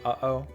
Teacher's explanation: Hawaiian does have one sound that English doesn't though, the glottal stop. This is the thing that sounds like a catch in the throat in the middle of the word uh-oh.